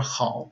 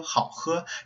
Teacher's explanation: But on the other hand, for 好 or in 喝, 好喝, your tongue doesn't quite touch the roof of your mouth. That H sound is a fricative, and fricatives are more narrow than an approximant, but not as narrow as the velar sounds in G and K.